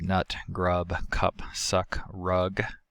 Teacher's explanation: the same thing as an uh but the syllable is stressed this is articulated by lowering the jaw flattening and retracting the tongue but not as much as it is for an ah plus the usual closure of the velopharyngeal port to avoid nasal · It is the lower of the mid and the more back of the central vowels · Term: carrot